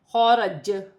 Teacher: وقف کی صورت میں زبر گر جائے گی اور جیم ساکن ہو جائے گی. وقف کی صورت میں جیم پر تھوڑا سا قلقلہ پیدا ہوگا